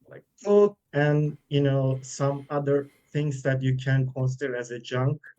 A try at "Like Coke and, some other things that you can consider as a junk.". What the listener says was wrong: So again, just for some reason, the pronunciation comes out a little bit mechanical. But I still think, the sentence stress is kind of noticeable. It's a little bit slow. It's a little bit mechanical.